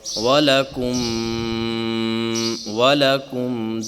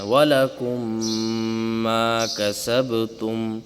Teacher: وَلَكُمْ، وَلَكُمْ، دونوں میم مل گئے اور غنّے کے ساتھ مل رہے ہیں، وَلَكُمْ مَا كَسَبْتُمْ۔ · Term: ادغام شفوی